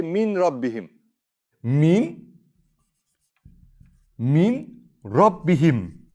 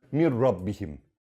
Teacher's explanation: See, I don't pronounce the n at all. I completely remove the n.